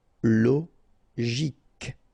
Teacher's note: Normally we should pronounce it CHO, okay, but in that case we pronounce it CO.